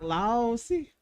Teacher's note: the stress is more so towards the the first syllable